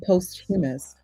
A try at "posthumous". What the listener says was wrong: Posthumous, not posthumous. We don't pronounce those words separately. It's posthumous.